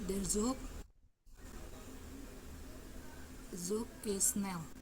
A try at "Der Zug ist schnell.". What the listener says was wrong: Der Zug ist schnell. Tidak dibaca Z ya, dibacanya agak mendesis. Zug.